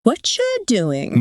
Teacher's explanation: So you hear how what are becomes like whatcha. Yeah. And you and doing also kind of get closer together.